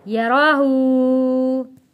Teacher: اس کو الٹا پیش کو ہم نے ایک الف کے برابر کھینچ کر ادا کرنا ہے، یعنی کہ پڑھنا ہے، یراہو۔ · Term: کھڑی حرکات